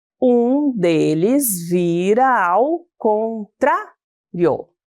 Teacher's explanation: Observem que paramos na sílaba tra, que é a mais forte, e excluímos a sílaba rio. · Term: sílaba forte